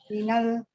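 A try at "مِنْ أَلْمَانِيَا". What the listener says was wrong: Jangan minal, itu bukan alif lam yang kita kenal. Itu itu hamzatul qat'i itu. Dibacanya a. Bukan minal. Min Almania.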